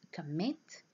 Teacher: here stress is on the second syllable